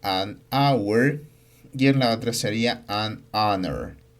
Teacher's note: Aquí la h no se pronuncia, por lo que se emplea el artículo indefinido an. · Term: h muda